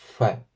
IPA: ɸ